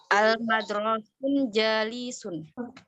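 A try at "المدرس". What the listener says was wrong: Bukan. Guru itu bukan al-madrasu, tapi al-mudarrisu ya, Bu ya. Iya, al-mudarrisu jalisu.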